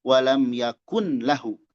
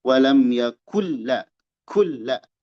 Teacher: Nah, di sini yakullahu ini sukun tapi menghadapi lam nun sukun menghadapi lam itu idgham. Idgham itu melebur artinya tidak dibaca. · tidak boleh dibaca nunnya tapi langsung ke lam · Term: idgham bighiri gunah, idgham bi ghairi gunnah